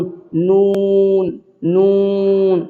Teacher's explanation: سرا زبان تالو سے مل کر نون ادا ہوتا ہے،